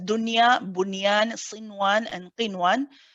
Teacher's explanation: The word ad-dunya is one of the exceptions which means that you don't merge it. You pronounce the noon nice and clearly. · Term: idhar mutlaq